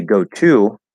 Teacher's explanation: we will very commonly change that T to a flap D